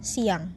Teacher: kata siang akan pula muncul bunyi y